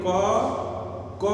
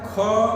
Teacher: क में कम प्राण वायु की आवश्यकता है, ख में ज्यादा की है